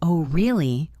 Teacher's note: with a high pitch at the end, it means I am surprised or I don't believe you. If I say it with a low pitch, oh really, it might mean I am disappointed or bored.